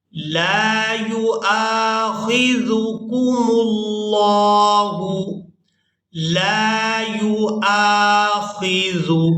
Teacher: حمزہ کو ہم نے الف مدہ کی وجہ سے کھینچ کر ادا کرنا ہے